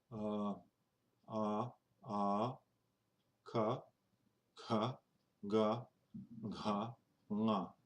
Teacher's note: The mouth's wide open, the sound comes from the guts, so they call it guttural.